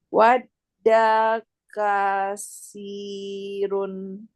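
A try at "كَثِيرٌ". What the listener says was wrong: Fi tipis. Wadda kathirun. Fi di ujung lidah. Ujung lidah kena ujung gigi seri atas. Fi. Fi tipis.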